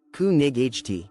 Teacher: In English, night used to be pronounced with a hard K and GH. Imagine saying, ku nig ht, too much effort.